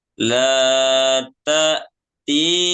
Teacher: ta'ti panjang, ada ya sukun setelahnya, sebelumnya ada kasroh